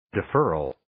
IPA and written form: dɪ'fɜːrəl (Deferral)